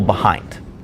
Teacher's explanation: The first syllable is unstressed, the second stressed. An easy way to remember the pattern of an iamb is to say da-dum, like the heartbeat.